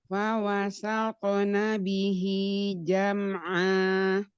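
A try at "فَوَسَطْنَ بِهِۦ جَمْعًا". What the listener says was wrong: Nah, to-nya to sukun, tebalkan lagi. Fawasaqna bihi jam'a.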